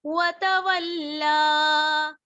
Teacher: لام کھڑا زبر لا، کھینچتے ہوئے وقف کریں گے